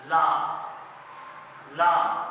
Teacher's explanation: लाम पढ़ते हुए हमारी जुबान जो है वो मसूड़ों के पास जाकर लगेगी